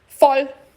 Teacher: Quando o O é curto, porque tem duas consoantes, ele é aberto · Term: O abertinho